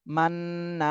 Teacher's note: হরকতের বামে নুনে তাসদিদ, ওয়াজিব গুন্না করতে হবে, আবার এক আলিফ টানও দিতে হবে। জবরের বামে খালি আলিফ, মদের হরফ।